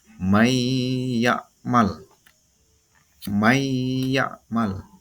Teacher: nun mati bertemu dengan huruf ya nunnya hilang yang keluar huruf ynya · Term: idgham